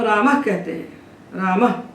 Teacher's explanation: तो जो हम रामः कहते हैं, रामः, तो अकार के बाद विसर्ग बैठा है। अकार का उच्चारण स्थान कंठ है, इसलिए अकार के बाद जो विसर्ग बोला जाता है उसका स्थान भी कंठ होता है